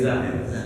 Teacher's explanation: Itu keluar ujung lidah ke pangkal gigi seri bawah. Gigi seri bawah nih ke dalamnya Pak.